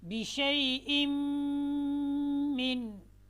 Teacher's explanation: बिशैइन में जो हमज़ा है उसको हमने मीम के साथ मिलाना है और गुन्ना करना है। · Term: इदगाम बिल गुन्ना